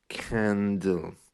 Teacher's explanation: if you think of a word like candle, it has a kind of deeper ah rather than aw.